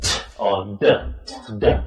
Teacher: So you've got the tongue up here, not touching the teeth, above the teeth, behind and above. And the sound comes when you move the tongue down, away.